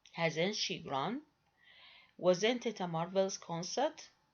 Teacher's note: the exclamatory questions are produced with a falling tone · The most characteristic exclamatory question is a negative yes/no question with a final falling instead of a rising tone.